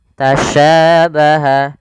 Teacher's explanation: Sya. Dan sya memiliki sifat namanya tafasyi. Tafasyi itu intisarus sauti fil fam, yaitu menyebarnya suara di mulut.